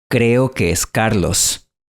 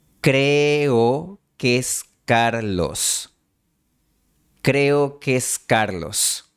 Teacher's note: Aquí también hay una fusión de dos E. El resultado típicamente es una sola E.